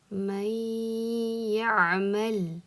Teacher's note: Keyingi etap bizda g'unna. Bu degani 2 harakat ushlab turamiz mana shu yerda.